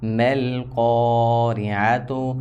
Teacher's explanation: میم لام زبر مل قاف الف زبر قا را زیر ری، یہاں را ہمیشہ باریک ہوگی، زیر آ گئی ہے.